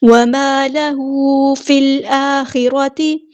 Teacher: اس کو یہاں پہ لمبا کرنا ہے، وَمَا لَهُ فِي الْآخِرَةِ فا کو ہم نے لام کے ساتھ ملا دینا ہے، حمزۃ الوصل ہمارا ڈراپ ہو جائے گا ، لام یہاں پہ لام کمریہ ہے، فی الآخرۃ یہاں پر